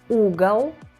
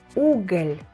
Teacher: Here we can see how the hard L and soft L affect meaning.